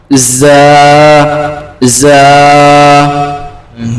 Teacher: জায়ের মাখরাজ হচ্ছে জিভের আগা আর দাঁতের গোড়া